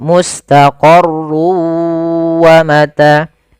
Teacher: masukkan tanwinnya ke huruf waw sehingga suara n-nya hilang. Tinggal ganti wa, maka mustaqarrun awalnya menjadi mustaqarru karena dia bertemu waw masuk ke waw. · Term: idgham bi gunnah